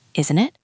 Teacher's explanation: When your voice goes down, it shows you are expecting them to agree. It creates a connection.